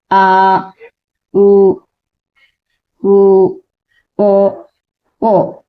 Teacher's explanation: ఇది చూడండి వెనకకు ఉండాలి కొంచెం మనం పలికేటప్పుడు నాలుక కొంచెం వెనకకు జరగాలి నాలుక వెనకకి జరగాలి అలాగే మన పెదవులు గుండ్రంగా ఉండాలి అంటే దగ్గరగా మన పెదవులు కొంచెం దగ్గరగా ఉండాలి అది ఉత్తర స్వరం ఆ